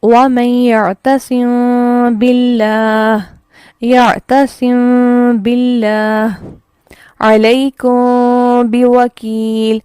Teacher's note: ہونٹوں کے تھوڑا سا کھلے رہنے سے کیا ہوا کہ نہ تو میم پراپر اس طرح سے ادا ہوا اظہار کی طرح، اور نہ ہی اس میں غنہ ایسا ہے جو کہ ادغام میں ہوتا ہے۔ ٹھیک ہے، تو یہ ایک درمیانی کیفیت ہے ادا کرنے کی جو تھوڑی سی میچ کرے گی ادغام کے ساتھ، لیکن نہ وہ پورا ادغام ہے اور نہ ہی وہ پورا اظہار ہے۔ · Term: اخفا